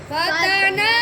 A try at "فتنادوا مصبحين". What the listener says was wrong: नाक में क्यों पड़ा और मद भी कर दिया।